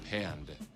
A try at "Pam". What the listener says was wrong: With an M. There's no D. It's Pam. Here, it's P. M. M. No, there's just one M.